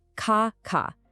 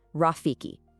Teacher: Notice how the pattern just repeats? Blocked air, smooth air, blocked air, smooth air. Consonant, vowel, consonant, vowel.